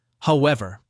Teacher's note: Notice how however is pronounced, however, with the stress on the second syllable.